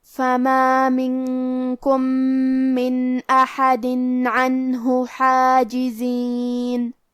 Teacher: حرف الحاء کو ہمیں حلق کے درمیان والے حصے سے پڑھنا ہے